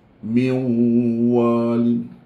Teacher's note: kita muncung min walin sebab hukum dia idgham